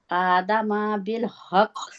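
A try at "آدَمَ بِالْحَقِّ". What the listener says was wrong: आदमा। नहीं, यही तो मेरी बहन प्रॉब्लम है, माँ नहीं है, मीम के आगे अलिफ नहीं है।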